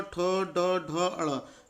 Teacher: जीभ ऊपरी जबड़े के सामने वाले हिस्से को छू रही है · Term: एल्वियोलर रिज